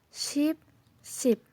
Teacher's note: it produced when you open your mouth wide and your tongue is forward and also it's a little higher too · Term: long e